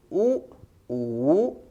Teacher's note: होठों की आकृति गोल हो जाती है, होठों के ओर छोर सिल जाते हैं, मुख का मध्य भाग थोड़ा सा खुला रहता है, मुख लगभग बंद की स्थिति में हो जाता है। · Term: समृत स्वर